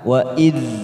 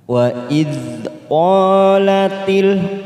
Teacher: hati-hati jangan sampai memantul kita tahan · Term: bukan Qalqalah